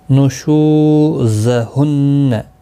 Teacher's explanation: شو واو مدہ ہے، ایک الف کی مقدار کے برابر کھینچ کر پڑھیں گے